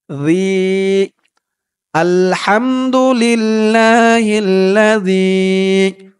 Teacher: জালের উচ্চারণটা একদম নরম হবে, জিব্বার মাথা উপরের দাঁতের মাথার সাথে লাগবে এই জালের উচ্চারণটা করার সময়।